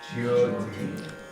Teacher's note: That Y can be pronounced a lot or hardly at all. You can say jyoti, where you're really putting the Y in there.